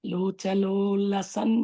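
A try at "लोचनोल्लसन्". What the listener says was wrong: Yeah, locha no lasan, na sound. Locha no lasan.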